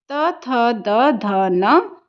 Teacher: त थ द ध न का उच्चारण स्थान दंत होता है